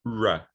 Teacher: And the retroflex approximant, r, okay?